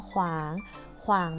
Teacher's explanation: มีพยัญชนะต้นสองตัวออกเสียงพร้อมกันคือขอไข่และวอแหวน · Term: ควบกล้ำวแหวน